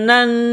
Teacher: نون کے اوپر تشدید ہے تو آواز ناک میں چھپائیں گے، غنہ کریں گے یہاں پر